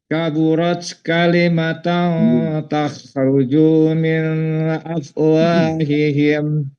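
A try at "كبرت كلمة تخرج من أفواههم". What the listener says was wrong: Tapi kaburat itu memang ada sifat huruf ta. Nanti kita belajar ya sifat huruf ta itu seperti apa. Jadi jangan jangan kebanyakan itunya ee apa namanya ee hamsnya ya.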